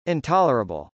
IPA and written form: ˌɪntˈɑlɚəbəl (intolerable)